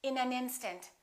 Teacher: we would connect the final consonant to the next vowel so this n and this a would be said together listen